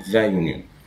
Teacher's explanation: فأول حرف أنا سامعه حرف الواي مش اليو، فبنقول the union لأن الواي مش vowel